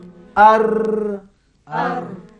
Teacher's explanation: ketika kita melafazkan huruf ni anak huruf ra ni hurufnya bergerak-gerak dia banyak berggerak hujung lidah ni hurufnya satu saja iitu Ra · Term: takrir